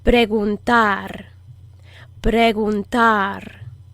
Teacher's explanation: It's a very, very soft, airy G.